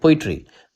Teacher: पोइट्री में पो को हम लोग थोड़ा सा तेजी से स्ट्रेस देके बोलते हैं, ई और ट्री को थोड़ा सा धीरे बोलते हैं। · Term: डैक्टिल